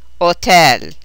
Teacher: When the letter H begins a word in Italian, which is rare, it is totally silent. The breathy h sound of the English H is not heard.